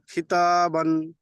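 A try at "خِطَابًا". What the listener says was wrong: কি তা নয়, কি তো। দেখেন, তা আর ত এর মধ্যে পার্থক্য আছে না? তা যাবার তা, কিন্তু ত যাবার তো, মুখ গোল হবে। তো আলিফ যাবার তো, খিত।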